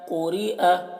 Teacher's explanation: قاف کو موٹا پڑھتے ہیں اور را کو باریک پڑھتے ہیں